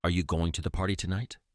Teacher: stressing the words you and party while using a rising intonation on tonight emphasizes the key information and indicates a genuine question